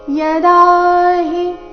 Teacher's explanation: ದ ದೀರ್ಘ ಹಿ ರಸ್ವ ಬರಬೇಕು